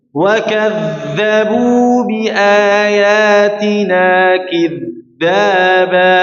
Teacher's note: Huruf dza ini mengalir ya. Huruf dza mengalir suaranya.